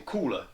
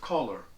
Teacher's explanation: shifting A to an O before an L, so saying Coola instead of collar.